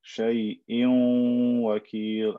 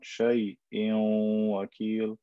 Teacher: So we merge it, but we also maintain the n sound of the noon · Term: idgham bi ghunna